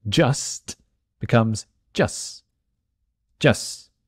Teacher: The letter T, especially if it's at the end of a word, likes to disappear when we talk quickly.